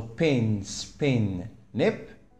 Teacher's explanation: same pH which is p is articulated differently in different environments in the first it was aspirated in the second it was unaspirated and in third it was not released so a phony may have several alones and these alic differences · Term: allophones